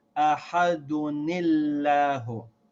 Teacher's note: Remember, the first rule was that if you have tanween followed by hamza al-wasl, you pronounce the noon sound of the tanween with a kasra